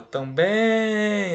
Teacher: Também, 2 sílabas, eu chamo a palavra também, a que se prolongou é o bem. Sílaba tônica é a última, aqui é uma oxítona, não é proparoxítona.